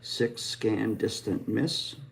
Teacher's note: S, which is an alveolar fricative, and it is voiceless.